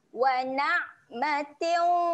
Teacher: Kita tahankan bunyi ain mati. Wa na' nak tahan kat mana? Tahan dekat tengah kerongkong, makhraj ra'in tu.